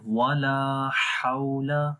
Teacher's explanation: آگے ہے ولا حول، ولا یہاں پر پھر الف آ گیا، الف سے پہلے زبر ہے، لمبا کریں گے ایک الف کے برابر یعنی 1 سیکنڈ